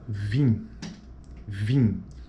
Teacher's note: as vogais tônicas nasais em final de palavra